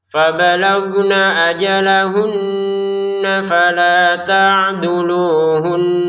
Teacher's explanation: kalau nun bertasdid ajalahun ada dengungannya di ujung suara kita itu